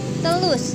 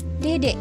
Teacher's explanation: Bunyi letupan lamino alveolar atau T dan D dilafalkan dengan baik juga, seperti anak berkata telus yang artinya terus, dan D seperti anak berkata dedek yang artinya juga dedek.